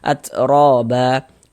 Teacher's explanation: Misalnya ro dibaca panjang, mad tabi'i panjang 2 harokat.